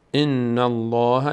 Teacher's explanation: ان الله لفظ جلاله پر خوانده میشه به خاطر فتحه ما قبل